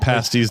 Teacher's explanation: you just don't pronounce the last syllable and just trail off like you've lost interest in the word halfway through